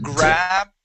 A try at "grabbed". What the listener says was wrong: Oh, go back to that D sound. Grabbed.